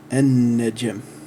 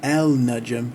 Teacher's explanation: So instead of al, the prefix becomes a, and then the first initial letter of that word has the shadda and is elongated. So it becomes an-najm.